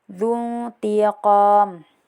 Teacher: Kemudian terdapat hukum ikhfa hakiki karena ada nun sukun bertemu dengan salah satu huruf ikhfa juga yaitu bertemu dengan ta. Jadi baca samar juga dun tiqom nun bertemu dengan ta.